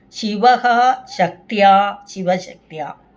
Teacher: ശിവശക്ത്യ എന്ന് ഒന്നിച്ചു പറയുമ്പോൾ വിസർഗം മാറിയിട്ട് ശ ഇരട്ടിക്കുന്നു